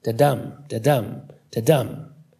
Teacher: said to best capture the rhythm of human speech its emphasis an unstressed syllable followed by a stressed one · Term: iambic pentameter, Iambic pentameter